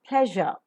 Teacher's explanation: shut off the nasal passage of air in the oral cavity the tip and blade of the tongue are raised towards the alveolar Ridge